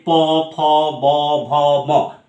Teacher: সেই বায়ু যখন দুটি ওষ্ঠ পরস্পরকে স্পর্শ করে উচ্চারিত হয় যে ধ্বনি, তাকে বলা হয় ওষ্ঠধ্বনি